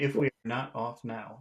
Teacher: you have to put a lot of emphasis on the word off because it means something different here it means leave it doesn't